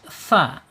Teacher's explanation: Ketika tsa ini sukun, jadi udaranya mengalir. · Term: Alhams